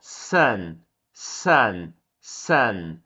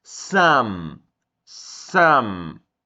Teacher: Eu não fecho os lábios para falar o som do N. Eu fecho os lábios para falar o som do M.